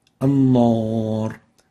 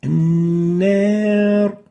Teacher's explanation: And as we said, the right way is to say an-nar, not an-nar. So make sure you give the noon the attenuation characteristic, the tarqiq characteristic that it should have.